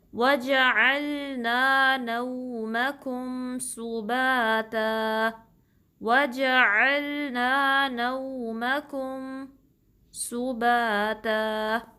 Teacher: عین کو درمیانے حلق کے حصے سے نکالنا ہے